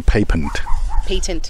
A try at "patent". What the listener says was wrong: Patent, actually. You're saying the British pronunciation. So, patent.